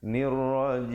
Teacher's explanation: Nirrajim, dan akhirnya ditutupkan mulut rapat menyempurnakan bunyi mim di akhir